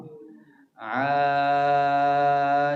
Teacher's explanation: untuk Ain huruf tu makhrajnya bermula pada Tengah kerongkong bila dia berbaris atas suara kita akan bermula dari peti suara